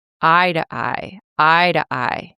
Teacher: It's an unstressed word. The stress of this sentence is heavily on I. · The reduced form of to is t. It doesn't sound like to at all, right? Because the stress is not on to, right? It's an unstressed word.